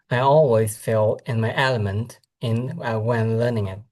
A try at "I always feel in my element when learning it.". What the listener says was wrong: Hold on. I feel, not fail.